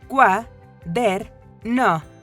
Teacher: ¿En dónde sientes que se hace énfasis al pronunciarla? Exacto, en la sílaba der. Esa es la sílaba tónica, que contiene el acento prosódico.